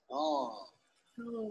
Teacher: It's called lateral because the tip of the tongue is placed on the alveolar ridge and air escapes through the mouth laterally along both sides of the tongue. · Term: lateral sound